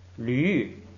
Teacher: 乌变成了吁，然后二声变成了三声